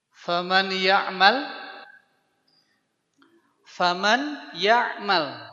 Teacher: dileburkan ke ya dan memakai gunah jadi ketika meleburkan ke ya dengungkan ya dengungkan dengan memakai rongga hidung kita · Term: Idam bunah